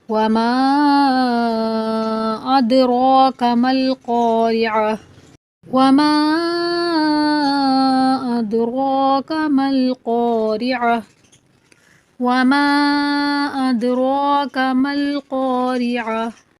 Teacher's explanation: دال کو جو نیلا رنگ دیا گیا ہے وہ اس بات کی نشاندہی کر رہا ہے کہ دال کے اوپر کلکلا کریں گے، یعنی دال کو تھوڑا سا ہلا کر پڑھیں گے۔ اد را گرین حروف ہے، یہ موٹا پڑھا جائے گا۔